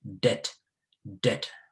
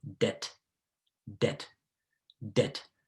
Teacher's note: the b is there only in writing but not in pronunciation